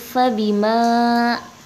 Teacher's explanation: dibacanya dua harokat atau dua ketukan